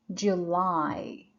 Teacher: the stress is on Li which is the second syllable